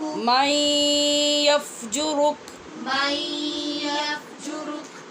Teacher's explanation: یہاں نون ساکن ہے من کا، اور اس کے بعد یا حروف یرمالون میں سے ہے، لہٰذا غنّے کے ساتھ ادغام ہوا ہے